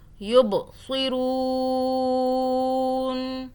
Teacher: یہ یب با پہ قلقلہ کرنا ہے یعنی کہ جھٹکے سے پڑھنا ہے. یب ب یہ قلقلہ کا حرف ہے.